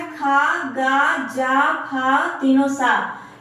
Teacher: जिन वर्णों का उच्चारण वायु को रगड़ते हुए होता है उन्हें संघर्षी व्यंजन कहते हैं। यानी जब हम बोलते हैं तो वायु में रगड़ लगता है, उनको हम बोलते हैं संघर्षी व्यंजन।